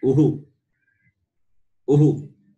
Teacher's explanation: When you pronounce Uhu, your lips, which are rounded, it remains same. And the vowel also pronounced along with the vowel sound U, Uhu.